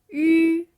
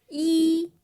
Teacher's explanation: >> that is always going to lead into one of these sorts of vowels, something that's pronounced kind of high up in the mouth and towards the front